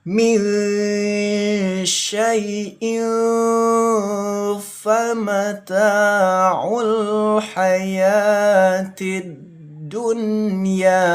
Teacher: Ikfa itu disamarkan. Kalau nun sukun, nun sukunnya disamarkan.